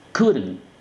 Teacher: entre la D y la N meto un sonido vocal que es como el schwa